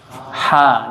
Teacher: ha keluar dari tengah tenggorokan, ha, jadi tipis, jangan ha tapi ha.